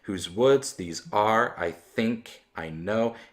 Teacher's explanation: we see a stress every other syllable, beginning with the second one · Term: iambic